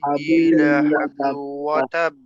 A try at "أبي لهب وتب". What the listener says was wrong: Remember, this is the ha. This ha is not, this is a stronger ha. It's not laha. It's not a soft ha. It's a ha. Tabbat yada abi lahabin wa tab.